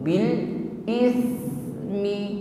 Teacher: ketika huruf sukun maka ditekan membacanya dan nampak sifatnya Hames ya alirkan nafas di sini Ya sifatnya Hames mengalir nafas bukan mengalir bunyi desis bukan Bil